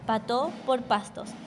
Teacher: la aspiración de la S final de sílaba, pató por pastos, especialmente en países como Panamá.